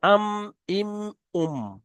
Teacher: দুই ঠোটের শুকন অংশ মিলিত হয়ে উচ্চারিত হয় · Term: মিম